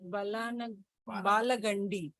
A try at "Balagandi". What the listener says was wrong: Balagandi. Balagandi. Means that A should have been double strength. Single strength. So it's Balagandi.